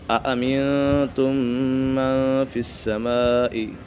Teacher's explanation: اس کے بعد ادغام شفوی، میم ساکن کے بعد دوسری میم آ جائے تو میم ساکن میں ادغام شفوی ہوگا، یعنی غنہ کر کے پڑھیں گے۔